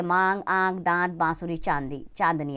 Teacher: अनुनासिक का उच्चारण करते समय नाक और मुख दोनों से हवा समान रूप से बाहर निकलती है।